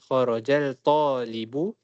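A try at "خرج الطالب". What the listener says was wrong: Dia ada sabdu kan? Sejak alif lam syamsiyah. Maksud yang disebut adalah huruf ta itu, lam tidak disebut.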